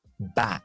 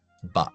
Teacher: Boca un poco más cerrada, lengua un poco más alta.